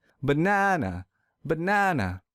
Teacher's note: here's another example let's say I pronounce this word as banana this is incorrect because I don't stress the second syllable so to fix this I will stress the second syllable real